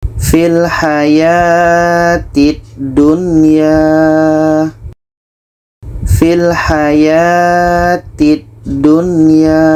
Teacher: Bermakna kalau dikatakan izhar, nun jelas, ya jelas, dan tidak ada dengung. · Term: izhar wajib